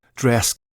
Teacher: we're going to look at the dress vowel because in this audio, it's a sliding vowel